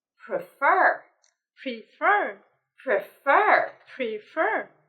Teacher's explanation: The first thing is with the word prefer. We need to stress the second syllable.